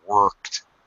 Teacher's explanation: It's more American style. Worked with a very hard or even stretched R.